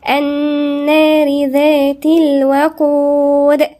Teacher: هنا في غنة عند النون، حرف غنة مشدد